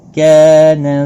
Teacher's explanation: وَإِن كَانَ، نون ساکن کے بعد حرف اخفا کا کاف ہے، اخفا حقیقی ہوگا۔ کا الف مدہ ہے، ایک الف کے برابر کھینچ کر پڑھیں گے۔